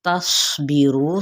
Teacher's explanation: صوت پہ صفیر بھی کرنی ہے، یعنی سیٹی، مثل سیٹی کے آواز کو نکالنا ہے